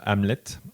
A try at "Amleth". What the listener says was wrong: Hamlet. Avec le H à la fin.